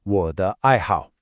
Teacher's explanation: The pattern is third tone, neutral, fourth, fourth.